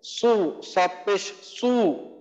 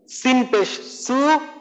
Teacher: মাখরাজ একই, কিন্তু সদকে আমাদের পড়ার সময় জিহ্বাটাকে আমাদের উপরের দিকে উঠায় পড়তে হবে।